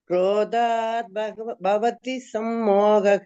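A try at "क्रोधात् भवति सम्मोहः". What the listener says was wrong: Stress the mahapranas, stress the mahapranas. Krodhat bhavati. One dha you have to stress, and the second dha, when you are dha you are taking, then you can reduce the speed. The bha again you have to take. Krodhat bhavati sammohaha.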